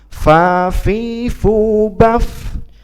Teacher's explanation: dan fa itu ada sifat hamas, artinya mengalir